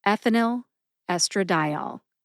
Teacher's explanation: Emphasize eth in ethinyl and emphasize di in estradiol.